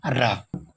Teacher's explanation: जीवा को दो से अधिक बार कंपन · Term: लुंठित